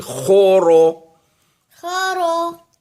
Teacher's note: جیسے خواہ کو بھی موٹا پڑیں گے اور را کو بھی موٹا پڑیں گے